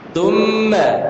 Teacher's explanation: Ujung lidah kita dikeluarin, Mbak. Thumma, dan menahan ketika sudah bersambung dengan mim, ya, lebih panjang dari 2 harakat.